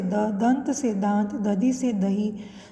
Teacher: यह हिंदी की अल्प प्राण सघोष स्पर्श दंत्य ध्वनि है।